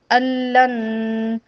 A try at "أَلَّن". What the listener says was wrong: ہاں ادغام کریں نا نون سے